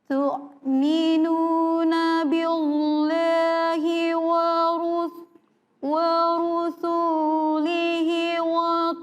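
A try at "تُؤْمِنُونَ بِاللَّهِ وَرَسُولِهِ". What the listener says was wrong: bukan tu', bukan tu', tapi di situ adalah huruf hamzah.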